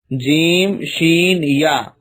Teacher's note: کاف زبان کی جڑ اور تالو کے سخت حصے سے ادا ہوتا ہے۔ جیم شین یا زبان کے بیچ اور تالو کے بیچ والے حصے سے ادا ہوتا ہے